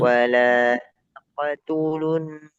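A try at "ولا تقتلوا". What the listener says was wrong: Qafnya tebal juga ya. Taqo. Taqo dulu. Wala taqotulun nafs.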